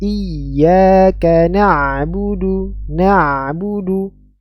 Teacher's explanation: Di antara sifat huruf ain adalah bainiyah, suara mengalir pertengahan. Sehingga ketika kita ketika dalam keadaan sukun ada aliran suara yang mengalir pertengahan, tidak langsung mati ya. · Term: huruf ain sukun